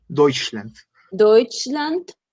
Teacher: Recuerda el Deutsch, diptongo EU, que suena hoy